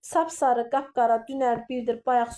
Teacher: milli sözlər olmasına baxmayaraq vurğu birinci hecaya düşür